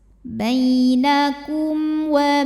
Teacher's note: Bainakum ada hukum izhar syafawi karena ada mim sukun yang di hadapannya bukan huruf mim, bukan huruf ba ya. Ini waw. Maka mimnya dibaca dengan jelas.